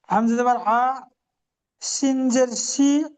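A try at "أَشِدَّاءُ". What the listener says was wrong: শিনটা দালের সাথে যুক্ত হবে, দালের উপরে তাসদিদ আছে। শিন দালজের শিদ।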